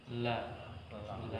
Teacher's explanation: al-jahr yaitu tidak mendorong udara keluar dari rongga mulut. La, bukan, sehingga keliru ketika membaca huruf lam itu la, ya, tidak mendorong udara.